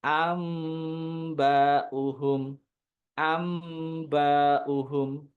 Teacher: Bukan anbauhum tapi am ada dengungan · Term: iklab